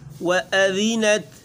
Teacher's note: واو باریک گول، و سختی نہیں پیدا کرنی ہے۔